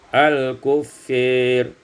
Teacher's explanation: al-kuffari, imalatu fathatil fa wal alif, dibaca imalah fathah fa dan alif menjadi al-kuffir